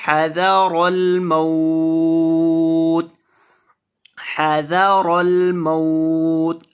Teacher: ذال کو پڑھتے ہیں زبان کی نوک سامنے والے اوپر کے دو دانتوں کے کنارے سے لگا کے، تو اس میں سیٹی کی آواز نہیں آئے گی